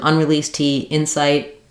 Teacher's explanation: I might use an unreleased tea Insight where I don't really let that tea out